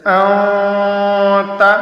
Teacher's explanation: یہاں پر نون ساکن کی اواز کو ناک کے بانسہ میں چھپا کر کے پڑھیں گے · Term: اخفاء